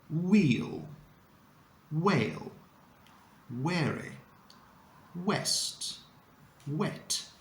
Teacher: the beginning is as if we wanted to say oo, but then we change our mind at the very last moment.